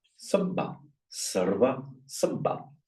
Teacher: Here is the second one is doubled. When you get ones that are both regarded as weak, a r and a v, it becomes a double b. So in Sanskrit, all is sarva, and in Pali, the Pali for all, sabba, sarva, sabba.